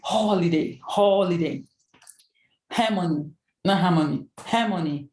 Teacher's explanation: Where you put more stress on the word will be on the first part of the word, which is the first syllable